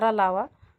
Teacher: जीभ, तालु, दांत और ओठों के परस्पर सटाने से होता है, किंतु कहीं भी पूर्ण स्पर्श नहीं होता है। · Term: अंतस्थ वर्ण